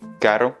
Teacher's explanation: on se rapproche du L, c'est beaucoup plus léger parce qu'il y a un seul R